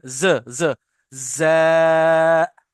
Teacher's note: लेकिन तीनों फ्रिक्शन वाले, और तीनों में दांतों को मिलाना होगा। जब हमारे दांत मिलेंगे तो फ्रिक्शन साउंड आएगा